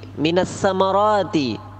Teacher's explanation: Fa akhraja bihi minas samarati, mad tabi'i rati, yang panjang itu ro-nya, bukan ma, bukan ti, tapi ro